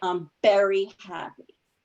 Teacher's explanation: it's pretty common for most Spanish speakers to substitute the sound of B for V